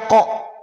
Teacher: huruf qo itu terdengar tebal bunyinya menjadi O karena pangkal lidahnya terangkat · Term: huruf yang tebal